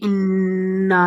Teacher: ناک سے ایک ہلکی سی نرمی والی آواز نکالنی ہے، منہ کو تھوڑا سا کلوز کر کے انا یعنی زبان کو اپنے تعلق کے ساتھ لگا کر، ٹھیک ہے، یہ والی بات ہو گئی۔ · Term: گنہ